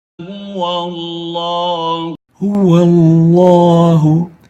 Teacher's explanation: Notice that the lam is having tafkheem.